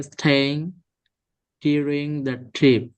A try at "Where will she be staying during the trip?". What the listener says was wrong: একটু একসাথে বলেন where will she be staying so প্রতিটা ওয়ার্ডে আলাদা আলাদা পজ না নিয়ে যেগুলো মার্জ করা যায় ছোট ছোট ওয়ার্ড গুলো